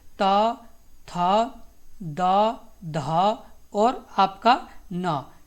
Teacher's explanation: आपका होता है दंतय से त, थ, द, ध और आपका न